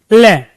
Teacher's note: जैसे हमने लय का उच्चारण किया तो हमारी जो जीभ है ना, ऐसे एक जगह स्थान पे गड़ जाती है लय। और जैसे हमने लय का उच्चारण किया तो जीभ के दोनों साइड से वायु निकल के प्यारे दोस्तों बाहर आ जाती है। तो पार्श्विक का मतलब है बाईपास। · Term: पार्श्विक व्यंजन